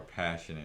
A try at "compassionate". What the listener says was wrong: You said passionate. You said passionate.